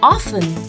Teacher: The T in this word remains silent, so we pronounce it as often. Although sometimes often is also accepted, but it'll be better if you pronounce it as often.